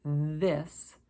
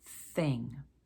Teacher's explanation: Now, if you don't use your voice, it's a soft TH, just a th, as in the word thing. So hard voiced this, soft, not using your voice, thing.